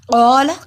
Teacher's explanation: قاف دو نقطوں والا موٹا پڑھا جاتا ہے. قا کو لمبا کیا، الف سے پہلے زبر ہے، حروف مد ایک الف کے برابر لمبا ہوگا.